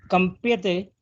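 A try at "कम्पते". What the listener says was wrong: No. There is no yakara.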